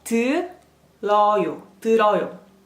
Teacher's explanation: You can drag the R sound into the next syllable.